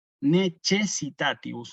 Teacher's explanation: la C con la E la pronunciamos como che